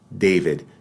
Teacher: than the ridge behind them which we do in English David notice the tongue is not on the teeth in English David in Spanish we lower the tongue just a little bit and